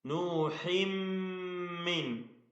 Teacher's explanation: തൻവീനിനെ പൂർണ്ണമായും മീമിൽ ലയിപ്പിച്ച് മണിക്കണം, ഇദ്ഗാം ബിഗുന്ന